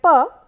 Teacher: it is a plosive bilabial consonant